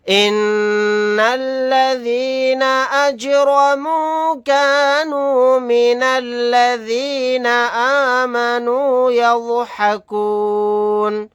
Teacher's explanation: جیم ساکن ہے، یہاں پر قلقلہ کر کے پڑھیں گے